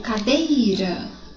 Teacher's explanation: Quando eu digo cadeira, olha, o DEI soa mais forte. Então, no caso de cadeira, é o DEI. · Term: sílaba tom